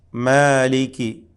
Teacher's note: രണ്ട് ഹറക്കത്തിന്റെ അളവിൽ മാത്രമാണ് ദീർഘിപ്പിക്കേണ്ടത് മലയാള ഭാഷാ നിയമപ്രകാരം പറയുമ്പോൾ രണ്ടു മാത്ര രണ്ടു മാത്രം നൽകി അതിനെ ദീർഘിപ്പിക്കണം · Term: അൽമദ്ദുൽ അസ്ലി